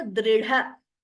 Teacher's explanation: Dr and dha. Second one is Mahaprana.